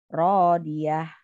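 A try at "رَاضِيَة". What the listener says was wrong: Iya, tapi ha besar. Radiyah.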